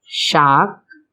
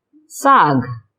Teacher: तद्भव शब्द में पहली पहचान है श के स्थान पर स का प्रयोग, अर्थात तालव्य श के स्थान पर दंत स का प्रयोग होता है